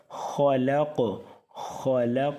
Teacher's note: حلق کے سب سے اوپر والے حصے سے موٹا بھی ہوگا